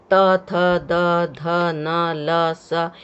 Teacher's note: त, थ, द, ध, न, ल, स, यह दंत है, ये दांत, इसका उच्चारण स्थान दांत है। जिह्वा दांत को स्पर्श कर रही है, इसलिए इसका नाम दंत है।